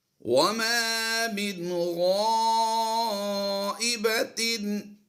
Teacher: نون ساکن کے بعد غین حروف حلقی سے ہے، اظہار کریں گے